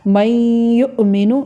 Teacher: یہ جو میں نون اور یا کو ملائے یہ تو ہو گیا ادغام، اور یہ جو ناک میں آواز لے کے جا رہے ہیں اس کو غنہ کہتے ہیں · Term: ادغام بالغنہ